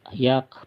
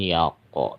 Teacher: Jadi hanya udara yang yak, bukan yako, bukan kol-kolah, tapi yak, ada udara.